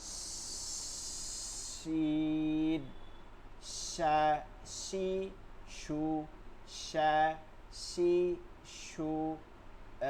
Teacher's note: শিনটা জিব্বার মধ্যখানটা তালুতে, এইখানে আসবেন না কোনোভাবে, যেন এখানে না আসে জিব্বাটার, মানে পড়ার সময় আপনি খেয়াল করবেন আপনার জিব্বা কোথায় নড়াচড়া করতেছে, যেটা সমস্যা হবে ওইটার দিকে বিশেষ করে। শিন, জিব্বার মধ্যখানটা তালুতে গিয়ে লাগবে